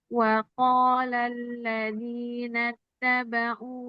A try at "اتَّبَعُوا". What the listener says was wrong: jangan wa qala alladzina nattaba'u enggak tasdid. Nattaba'u harus gitu intonasinya menandakan itu tuh tasdid. Kalau tadi sekedar double. Nattaba, nattaba.